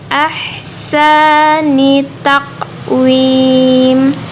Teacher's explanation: Karena itu ha tipis, jadi kita bacanya seolah-olah mengeluarkan napas.